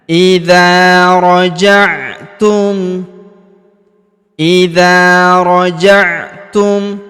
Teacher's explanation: Huruf dza kita panjangkan dua harakat karena terdapat alif di depannya. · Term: panjangkan 2 harokat